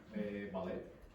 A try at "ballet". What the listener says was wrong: So we pronounce it in a French style, okay? So there's no T pronunciation there.